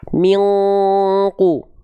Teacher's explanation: Setelah disamar dan dengungkan, bersiap-siap melafalkan huruf qaf. Karena huruf berikutnya qaf, bersiap-siap melafalkan huruf qaf. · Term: ikhfa